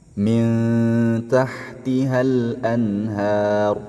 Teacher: nun sukun bertemu dengan ta nun sukun bertemu dengan Ta Maka nun sukun ini tidak boleh dibaca izhar ya tidak boleh dibaca jelas harus dibaca samar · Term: ikhfa